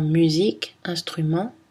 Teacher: M est une consonne nasale, bilabiale, voisée.